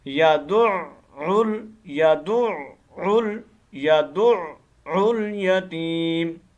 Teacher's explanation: ये यदउल यतीम नहीं है, यदुउल, आइन मुशद्दद है, दाल को हमने आइन के साथ कनेक्ट करके पढ़ना है। पहले आइन के साथ कनेक्ट होगी दाल, उस वक्त भी आइन की आवाज़ निकलेगी, फिर आखिर में जब आइन खुद अदा होगी तो उस वक्त भी आइन की आवाज़ निकलेगी